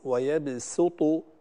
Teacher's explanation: بضم السين، يعني هنا نقرأها بالسين وليس بالصاد